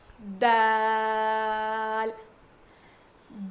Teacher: زبان کی نوک کو سامنے کے دو دانتوں کے جڑ میں لگانے سے ادا ہوتا ہے. سامنے کے دو دانتوں کو ہم ثنایا علیہ کہتے ہیں، اس کے جڑ میں لگانے سے ادا ہوتا ہے.